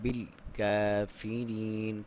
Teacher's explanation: بل، لام پہ آپ نے حرکت نہیں، بل کر کے نہیں کرنا. بل کافرین، کاف کے اوپر باریک پڑھیں گے اسے، اور کھڑی زبر ہے تو 1 الف کے برابر لمبائی. یا ساکن سے پہلے زیر ہے، اسے یا مدہ کہا جاتا ہے، اور 1 الف کے برابر لمبائی، وقف میں زیادہ لمبا بھی کر سکتے ہیں.